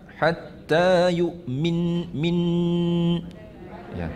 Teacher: ولا تنكحوا المشركات حتى يؤمن kita waqaf di situ dengan wajibul gunnah. Wajibul gunnah dengan kadar 2 harakat.